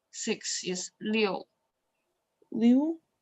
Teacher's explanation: the sound is dropping like, yeah, the fourth tone